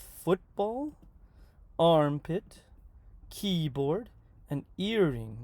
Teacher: the first syllable in these two-syllable compound nouns is stressed · The first word in two-syllable compound noun will be stressed.